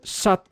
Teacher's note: The modern sha, but in this case, it's got the silent T at the end.